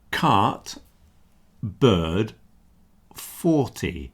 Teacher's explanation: You see you don't hear the R sound here. The R is combined with the previous vowel. So in the word like cart, you've only got three sounds.